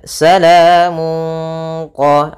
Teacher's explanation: bacaan Ikhfa yaitu suaranya tanwinnya disamarkan ke huruf q qf itu termasuk huruf yang Istia dan agak ditebalkan Salamun qo